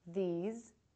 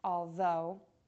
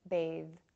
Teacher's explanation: the airflow is going to continue loudly and voice is on . You can actually feel the tension from the voice box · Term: voiced TH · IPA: /ð/